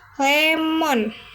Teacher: Konsan lateral ada L. Bunyi ini dihasilkan dengan lidah menyentuh langit-langit mulut di bagian depan membiarkan udara mengalir di sisi lidah. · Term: Konsonan lateral